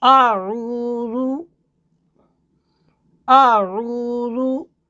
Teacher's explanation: حمزہ اور آئین کی ادائیگی میں آپ نے فرق رکھنا ہے۔ اعو، آئین گلے کے درمیان سے نکلے گا، حمزہ جو سینے کی طرف گلے کا حصہ ہے وہاں سے نکلے گا۔